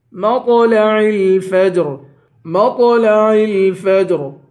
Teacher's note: میم کو تو سے ملا کر تو کو پر پڑھیں گے